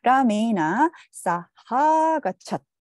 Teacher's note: 두 개의 단모음이 합쳐져서 사하 이렇게 장모음으로 합쳐지게 된 것을 볼 수가 있습니다